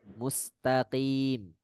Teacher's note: Huruf qaf dia tidak pecah bunyinya.